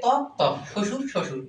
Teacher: এখানে বয়ের কোনো উচ্চারণ নেই। তাহলে এখানে ব ফলাটা অনুচ্চারিত।